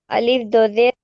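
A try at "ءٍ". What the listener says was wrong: वो भी हमजा ही है, अभी बताई थी ना मैं, आप नहीं थे देखो क्लास में, अभी थोड़ी देर पहले बताई थी मैं।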